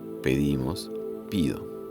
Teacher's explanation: También se producen irregularidades vocálicas por cierre de vocal, como la alternancia e-i que se registra en el verbo pedir.